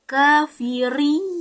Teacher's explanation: ri itu dibaca tafkim atau tebal